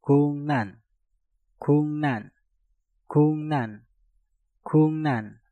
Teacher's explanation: Kuk diakhiri dengan giok, setelah itu diikuti kata yang diawali dengan real. Giok yang ada di kata guk kita rubah menjadi ngieng dan realnya kita rubah menjadi nien.